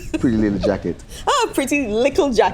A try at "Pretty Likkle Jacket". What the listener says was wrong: Pretty Likkle Jacket. You have to say the Likkle because you know Antigua.